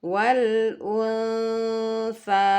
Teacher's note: pertengah an maka dia antara bunyi En dan Eng ya jadi dia pertengahan tidak mengarah ke bunyi n seutuhnya tetapi juga tidak mengarah ke Eng seutuhnya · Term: Ikfa ausat